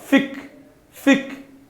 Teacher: Esse F é o I é o meu segundo som, Fi, e o X vai ter o som pra gente de KS. Então, fic, a gente dá uma travadinha na garganta, lembra? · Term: som de KS